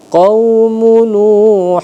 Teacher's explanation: Kaumu Nuhu ditahan dua harakat karena idgham